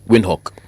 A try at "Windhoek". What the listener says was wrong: Yes, but pronounced Vind. The W has a V sound to it.